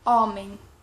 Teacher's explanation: Le H en portugais, il a toujours un son muet. Il n'est pas muet comme c'est un mot arabe, mais en général, les mots qui sont d'origine de la langue portugaise, ils ont toujours un son muet, même s'ils commencent par H.